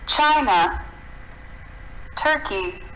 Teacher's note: eles têm o syllable stress no começo.